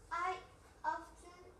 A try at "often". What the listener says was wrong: Esta T no suena. Often. Often.